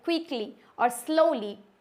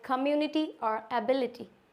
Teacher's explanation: Y sound like ए long ई, ये जो होगा एक लॉन्ग ई के तरीके से साउंड देगा एट end of the word, such as in adverbs like क्विकली और स्लोली और words that एंड in it like कम्युनिटी और एबिलिटी।